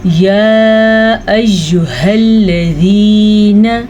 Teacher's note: 2.5 second تک ہم نے اس مد کو کھینچ کے پڑھنا ہے